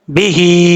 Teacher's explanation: ہا کے اوپر مد ہے، مد منفصل کہتے ہیں اسے، 2.5 الف کے برابر لمبا پڑھیں گے